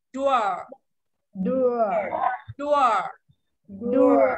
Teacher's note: Có ờ cuối một chút ạ. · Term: có âm ờ cuối